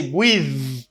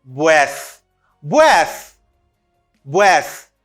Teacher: When I say breath, ça veut dire TH là, bon mon TH non voisé. Pas gain vibration